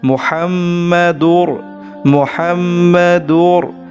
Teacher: মুহাম্মদ এর মধ্যে গুন্না হবে গুন্না হচ্ছে নাকে ঢুকিয়ে পড়া